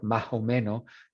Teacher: Entonces, cuando hablamos de nivel fonológico o la fonética, por ejemplo, los caribeños, los chilenos, los que viven en la costa de Ecuador, aspiren y eliden. So aspirar es like an H sound for an S, like más o menos.